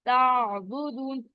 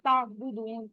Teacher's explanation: پھر تعبدون, آئین کو آپ نے صحیح ادا کرنا ہے, جھٹکا نہیں آنا چاہیے. آپ کو پتا چلے گا کہ آئین کی آواز جاری ہی رہ رہی ہے